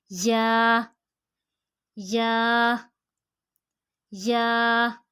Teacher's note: ज़ुबान के दरमियान और ऊपर के तालु के दरमियान से